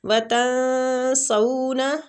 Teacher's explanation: نون ساکنہ کو چھپائیں گے